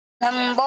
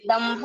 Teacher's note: দম্ভর নিচে যে বয়টা আছে এটা হচ্ছে মহাপ্রাণ, সেজন্য একটু উচ্চস্বর নিয়ে যেতে হবে